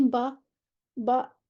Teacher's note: با کا مخرج بالکل لپس، دو ہونٹوں کو ملا دیں گے، با نکل آئے